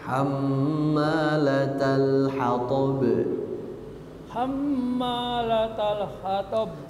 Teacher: Lamnya tidak berhenti, langsung latal nyambung suaranya.